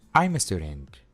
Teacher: la palabra I'm termina con el sonido consonante M y la A empieza con un sonido vocal, así que simplemente los unimos. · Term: link sound